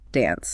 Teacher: But in most of America, it's a flatter, shorter A sound, more like in cat, dance.